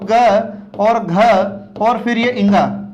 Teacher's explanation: क्यों इनको सघोष कहा जाता है, क्योंकि इनका उच्चारण करते समय हमारे कंठ में कंपन ज्यादा होता है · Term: सघोष व्यंजन